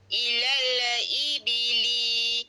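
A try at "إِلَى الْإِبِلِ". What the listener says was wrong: Ilal ibili. Lal tu je, jangan baca lala. Ilal tak boleh. Dia kena lal lah.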